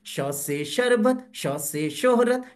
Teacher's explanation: शौ में मुंह की छत को थोड़ा जीभ छुआ करती है जी, शौ से थोड़ी सीटी गाढ़ी अधिक हुआ करती है जी।